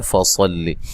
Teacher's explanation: صاد کو خوب موٹا کریں، لام کو باریک پڑھنا ہے، لمبا نہیں کرنا، زبر زیر پیش کو لمبا نہیں کیا جاتا۔